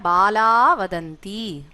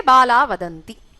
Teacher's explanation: So you will see that the Visarga is missing. That's Lopa.